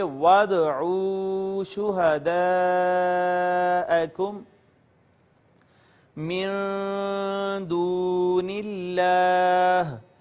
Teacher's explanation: اس کے بعد اس میں جلالت اللہ آیا ہے، اس میں جلالت کا ماقبل مکسور ہے، لہٰذا اس کو باریک پڑھیں گے، اور یہ واو مدہ ہے اس وجہ سے کہ ماقبل اس کا مضموم ہے۔ · آپ کے علم میں ہے کہ دال قطب جدن حروف قلقلہ میں سے ہے، اور حروف قلقلہ قاف تا با جیم دال میں سے اگر کوئی بھی حرف ساکن آئے، یہاں پہ دال ساکن آ گئی، لہٰذا یہاں پہ ہم قلقلہ کریں گے اور یوں پڑھیں گے وَادْعُوا شُهَدَاءَكُمْ مِن دُونِ اللَّهِ۔